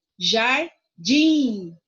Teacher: Jardim, o din é a sílaba mais forte. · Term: sílaba tônica